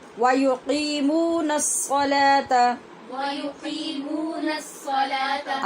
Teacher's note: یہاں صاد حروف شمسی میں سے ہے، اس لیے ادغام ہوا